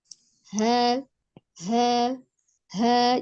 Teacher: Jadi dibaca dengan lembut, disertai dengan aliran nafas yang mengalir ketika mengucapkan huruf ha. Huruf H termasuk di dalam huruf yang tarqiq atau dibaca tipis ya. · Dilihat dari jelas atau samarnya huruf H memiliki sifat al-hams atau nafas berhembus ya ketika mengucapkan huruf H. Kemudian dilihat dari kuat atau lemahnya huruf, H memiliki sifat raghalah, lembut, suaranya tidak tertahan.